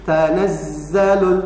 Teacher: Za ini ada rokhwa, maka bacanya jangan digentakan, jangan tanazzalul, tapi tanazzalul, ada jeda ya, rokhwa mengalir.